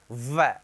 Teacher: वह का उच्चारण स्थान है दंत प्लस ओष्ठ से बनेगा, दंतोष्ठ, बिल्कुल। वह का उच्चारण स्थान दंत और ओष्ठ है, व, दांत भी काम करेगा, ओष्ठ भी काम करेगा, व, दंत प्लस ओष्ठ।